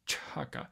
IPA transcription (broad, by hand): tʃʰaka